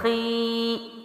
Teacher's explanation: اب خا ہے موٹے حروف میں سے ادائیگی کیا ہے، خا، ٹھیک ہے، اور خی، ای، یہ جو ای کا ساؤنڈ ہے یہ باریک ہے۔ خا کی جو سٹارٹنگ ہے وہ موٹی ہے، ٹھیک ہے، لیکن جو لمبائی ہے وہ باریک ہے۔ یہ ہے اصل میں موٹے حروف کی جو مد ہے، یعنی کھڑی زیر ہے، اس کو باریک پڑھنا۔